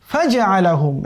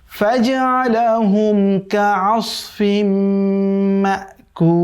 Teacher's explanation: এখানে জিমটা শক্ত, আবার আইনটা কণ্ঠের মধ্যভাগ দিয়ে উচ্চারিত হবে। ফাজআলাহুম কাআসফিন, এই যে আইন আছে এরপরে সদ আছে, খেয়াল রাখতে হবে, কাআসফিন, কাআসফিন যাতে না হয়ে যায়, কাআসফিম মাকুল।